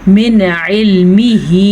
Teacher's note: यहाँ पे नून साकिन के बाद आइन है जो कि हरूफे हल्की में से है, तो हम नून को ज़ाहिर करके पढ़ेंगे, बग़ैर गुन्ने के पढ़ेंगे। इस कायदे को कहते ही इजहार है, ये इख्वा के उलट होता है।